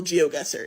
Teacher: your accent is rhotic, meaning that it doesn't drop the R sound at the end of syllables